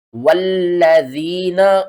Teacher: والذین، واو لام زبر واللام زبر لا، ذال یا زیر ذی، نون زبر نا، والذین، یا ساکن سے پہلے زیر ہے، حروف مدہ ہے، اس کو آپ نے کھینچنا ہے 1 الف کے برابر، لام کے اوپر تشدید دیکھیں تو یہ 3 حروف آپس میں ملائے گی، 3 دندان ہیں تو 3 حروف ملیں گے۔